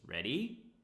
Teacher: Rising intonation, yes, no question.